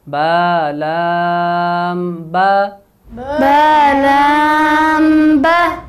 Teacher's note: با باریک حرف ہے، موٹا نہیں کریں گے